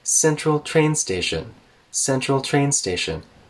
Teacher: So when we have a two-noun phrase, usually the first noun, here train, is a higher pitch than the second noun, station.